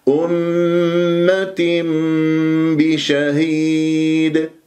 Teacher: الاقلاب يحدث عند الباب تقلب الى ميم · جاء بعدها باء بشهيد إقلاب، لأنه أحد الأحكام النون الساكنة و التنوين الإقلاب يحدث عند الباء تقلب إلى ميم